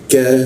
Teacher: lidahnya diturunkan dengan rongga udara terbuka dan ada hembusan udara